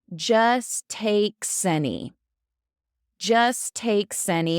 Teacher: Now that S is going to go into any.